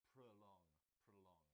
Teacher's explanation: It's got 2 syllables. The stress is on the second, and so the O in the first part sounds like prolong, prolong.